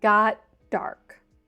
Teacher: So we just have that D sound and we've dropped the T. But like I said, it might be easier to think in one fluid phrase, until it got dark.